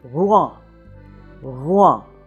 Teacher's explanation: that little soft r in the back of the throat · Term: French r